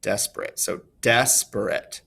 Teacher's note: you can hear how we place more emphasis on the beginning of that word than the end of that word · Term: stressed unstressed unstressed